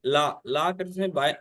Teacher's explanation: इस ला ध्वनि को पार्श्विक ध्वनि भी कहते हैं